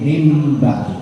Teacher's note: nun sukun atau tanwin bertemu ba dibaca dengung namanya iqlab